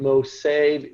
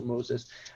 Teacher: you have no SH sound in Greek, so you lose the SH as well